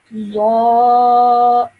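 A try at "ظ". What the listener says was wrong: you have to round your mouth a bit more and produce a heavier sound.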